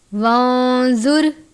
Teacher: نون ساکن کے بعد زوا ہے، حروف اخفا میں سے، اخفا کا قاعدہ لگتا ہے، را ساکن ہے اس لیے را کو پر پڑھتے ہیں۔